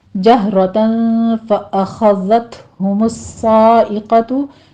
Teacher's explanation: جہ میں یہاں پر آپ نے ایک سے حلق سے ادا کرنا ہے، اس پر قلقلہ نہیں کرنا، اس کو سٹاپ کرنا ہے